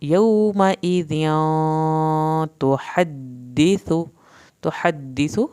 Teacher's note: हा को हल्क से पढ़ना है, सा को ज़बान की नोक से पढ़ना है।